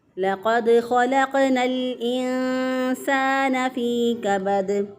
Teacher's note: اب یہاں پر لقد قاف موٹا ہے، اگر موٹے کاف کو باریک کاف سے بدل دیا غلط ہو جائے گا۔ اسی طرح لام کی حرکت کو اگر لمبا کیا تو غلط ہو جائے گا، جیسے لا قد اگر کوئی پڑھ دے لا قد غلط ہو جائے گا۔